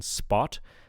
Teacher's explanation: when it immediately follows a consonant, like in spot, it becomes unaspirated